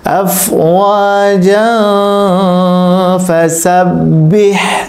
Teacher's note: যেহেতু তানবিনের পরে ফা এসেছে, এখানে নুন সাকিন ও তানবিনের ইখফা হয়েছে, গুণনা করে পড়তে হবে